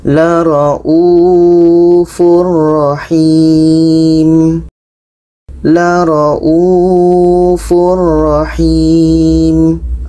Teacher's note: Bermakna ini tanwin bertemu ro tidak dengung.